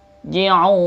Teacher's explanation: Ji'un ya, un itunya wawnya mutabi, nunnya masuk mad arid disukun, dibaca sampai 4 6 harokat ya